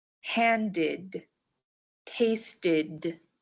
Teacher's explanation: The E D in handed and tasted ended with an ID sound.